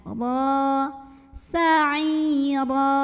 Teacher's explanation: Sa'ira, huruf ra dibunyikan secara tafkhim karena ra-nya berbaris di atas tanwin fathah. Maka cara membacanya adalah dibunyikan dengan menebalkannya. Pangkal lidah kita naikkan.